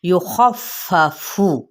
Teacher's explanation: لا یخفف، لا پہ مد سلیب الالف کا قاعدہ، یخفف، خا پر لیٹر ہے اور خا کی زبر کو ہم فا کے ساتھ ملائیں گے، اور فا کی زبر کو پڑھتے ہوئے یعنی تھوڑی سی شدت پیدا کرنی ہے، کیسے؟ دبا کے پڑھنا، یخفف، ٹھیک ہے؟